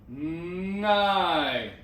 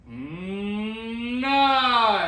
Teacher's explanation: The thing I like to finish with is, instead of a ma, the soft palate and the back of the tongue come together